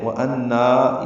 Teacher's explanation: نون مشدد پہ غنہ ہے، نا الف مدہ ہے، وَأَنَّا میں ضاپور ہے، نون مشدد پہ غنہ ہے، نا میں مد منفصل.